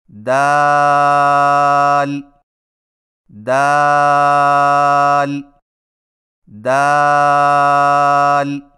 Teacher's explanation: دال کی ادائیگی میں زبان کی نوک کو ثنایا علیہ کی جڑ سے لگا کر باریک آواز میں پڑھیں